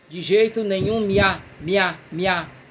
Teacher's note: Eu não digo assim, eu digo de jeito nenhum miá. Eu junto o i com o e com a. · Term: fusão